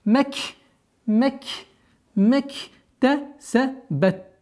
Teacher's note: с огласовки фатха уходим на букву каф с сукуном. И, естественно, долгота у нас аннулируется.